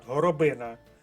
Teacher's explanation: наголос падає на третій склад